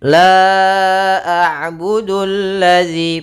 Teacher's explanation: ada alif lam syamsiyah, yaitu alif lam yang tertulis tapi tidak dibaca